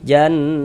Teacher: Sehingga di bagian di bagian situnya tuh suaranya itu kita tahan. Nah, kita gunnahkan. Nah, kita panjangkan kira-kira sepanjang 2 harokat. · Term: gunnah musyaddadah